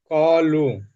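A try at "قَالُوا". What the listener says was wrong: কলু, টান দেবেন তো।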